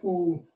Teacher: is actually near the front of your mouth and here oh the tongue actually moves a bit back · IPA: əʊ